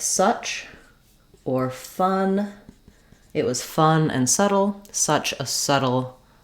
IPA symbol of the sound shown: ʌ